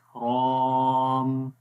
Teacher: रॉ को लंबा करेंगे, मोटा भी पढ़ेंगे रॉ को, और रॉ की वजह से अलिफ भी मोटा हो जाएगा।